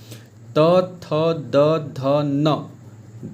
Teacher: ठीक है, त थ द ध न, दांत, जीभ जो है वो दांत में सटता है, तो ये इसका स्पर्श क्या है, दांत है।